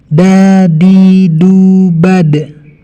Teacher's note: Dal ketika disukun dia memantul.